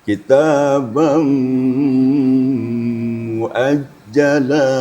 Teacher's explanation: Kitabam, suaranya full ke hidung ya. Kitabam muajjala. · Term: idgham bi gunnah